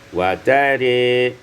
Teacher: ketika waqaf dibaca imalah ra menjadi wa tari